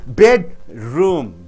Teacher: bed should be stressed.